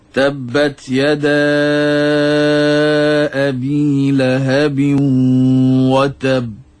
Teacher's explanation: sebutan sifat Qalqalah bagi huruf ba itu dan juga huruf Dal jelas pada ayat yang pertama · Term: Qalqalah Akbar